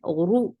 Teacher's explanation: Uru is very short and heavy.